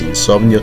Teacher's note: Insomnio termina en O, la sílaba tónica es la penúltima.